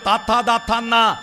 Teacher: ആ നാവിന്റെ അറ്റം പല്ലുമ്മ തൊട്ടിട്ട് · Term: ദന്ത്യവും